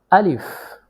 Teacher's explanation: আলিফ মুখের খালি জায়গা হইতে উচ্চারিত হয় আলিফ